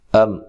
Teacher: میم ساکن کا اظہار ہے، غنہ نہیں کرنا، حمزہ کو تحقیق سے پڑھنا ہے۔